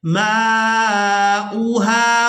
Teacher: हमज़ा को अदा करना है, वाव को अदा नहीं करेंगे और हमज़ा को बगैर खींचे ही अदा करेंगे। बाद लोग यहाँ पर हमज़ा को खींचकर अदा कर देते हैं, जो कि बिल्कुल गलत है।